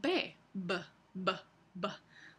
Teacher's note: un sonido bilabial sería por ejemplo la b b b b los dos labios se tocan hay un cierre completo